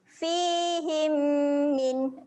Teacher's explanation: him dekat sini kita dengungkan sebanyak 2 harakat.